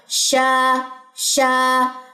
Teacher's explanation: وسط زبان جب بالمقابل اوپر کے تالوں سے لگے گی تو شین ادا ہوگا، شا شا. اور یہاں پہ الف مدہ کا رول بھی ساتھ میں، جوف میں آواز جو ہے وہ غائب ہو جائے گی، شا.